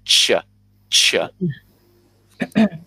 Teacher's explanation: Our tongue is going to touch the top of our mouth, and it's going to kind of stop the air a little bit. It's going to stop the air from going through, and it makes a more harsh sound when we get a ch sound.